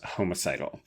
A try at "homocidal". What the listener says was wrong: I know that's what you said, but it really sounded like homicidal. It's homocidal.